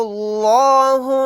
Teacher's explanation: یہاں پر لفظ اللہ کے لام کو موٹا یعنی پر پڑھیں گے کیونکہ لفظ اللہ کے لام سے پہلے پیش ہے